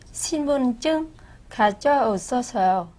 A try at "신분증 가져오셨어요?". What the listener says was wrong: 좀 더 자신있게 하면 더 잘할 것 같아요. 신분증 가져오셨어요? 질문이니까 가져오셨어요? 이렇게 네. 올릴까요?